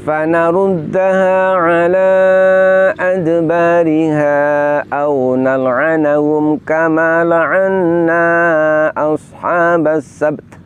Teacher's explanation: ketika kita waqaf dengan mensukun huruf ba dan huruf ta, berarti kita menampakkan makhraj dan sifat kedua huruf tersebut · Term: mensukun dua huruf terakhir